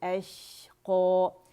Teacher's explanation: वयतजन्नबुहल अशक़ो, अश में तफशी है, शीन का शोर है, वो सुनाई देगा, रखावा है, ठीक है। अश एंड हम्स भी है।